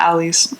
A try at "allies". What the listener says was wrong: The allies? The allies? Sounds like you're saying alley cat.